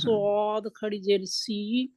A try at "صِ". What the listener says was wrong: سی موٹا ہے، سی. آپ منہ نہیں گول کریں گے، گول کر کے پڑھیں گے،